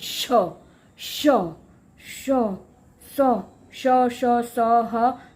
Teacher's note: इनको बोलने के लिए हमें सांस को बाहर थ्रो करना पड़ता है, मुख से बाहर निकालेंगे तभी ये व्यंजन हम बोल पाएंगे। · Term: ऊष्म व्यंजन